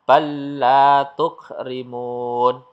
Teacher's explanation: lam sukun seolah-olah tidak ada